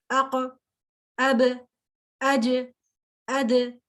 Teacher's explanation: یہ ہے قلقلہ ساؤنڈ, کہ میں تھوڑا سا آواز کو ایکو دے رہی ہوں, ٹھیک ہے, تھوڑا سا اس کو شیک کر رہی ہوں